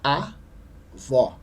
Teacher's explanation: E no caso de avó, é a última sílaba, né, que é a sílaba mais forte. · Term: oxítona